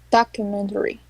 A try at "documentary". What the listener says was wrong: Better.